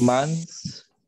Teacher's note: Without vibration. It's an unvoiced sound with your TH.